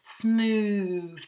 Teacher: the long vowel sound, smooth, that ooh in the middle, which really slows down the reading of this line